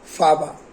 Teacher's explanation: El aire no entra a la nariz y la M suena como una B. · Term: hiponasabilidad